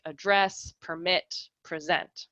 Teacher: stress pattern they are nouns like a dress permit present and when they have a weak strong stress pattern they are verbs like a dress permit present